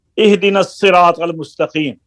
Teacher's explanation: صاد بھی پر ہے، را بھی پر ہے، الف بھی پر ہے، طا بھی پر ہے